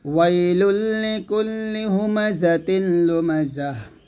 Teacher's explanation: আর যদি আমি এখানে থেমে যাই তাহলে তাটা হা সাকিন হয়ে যাবে